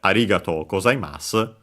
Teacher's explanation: Yeah, and last but not least, the ku, actually at some point the k dropped, and so ga ta u. But because of the further evolution of the Japanese language, AU became actually OU and so long O